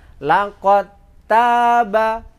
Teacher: Nah, sekarang langsung diidghamkan laqad taba, bunyinya dal, pantulnya dal sama sekali tidak ada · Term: idgham mutajanisen